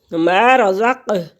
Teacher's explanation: زبان کا پچھلا حصہ اٹھتا ہے اور تالو کے نرم حصے کو مس کرتے ہوئے قاف ادا ہوتا ہے